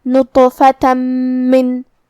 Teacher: کلمت من میں میم حروف الادغام بغنہ میں سے ہے اور ادغام کا معنی ہے حرف کو حرف میں داخل کرنا، لہذا ہم یہ تنوین کو میم میں ملا کے غنہ اور تشدید کے ساتھ یہ حکم کو ادا کریں گے